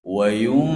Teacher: ada nun yang disukun itu bertemu huruf dzal. Jadi harus ada ikhfa yang berdengung.